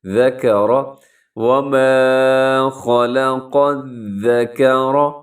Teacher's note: آگے قاف کو ذال کے ساتھ ملائیں گے، قاف زبر ذال، قذ، ذال زبر ذا، قذ، کاف زبر کا، را زبر را، ذکر، وما خلق الذکر، یہاں را موٹی پڑی جائے گی کیونکہ را کے اوپر زبر ہے، را کے اوپر حرکت ہوتی ہے تو را موٹی پڑی جاتی ہے۔